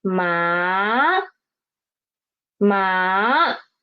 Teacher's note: The pitch is rising up from 3 to 5. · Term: second tone